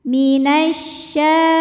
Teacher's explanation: alif lam menghadapi huruf Syamsiah yaitu syin maka alif lam tidak kita baca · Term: alif lam syamsiah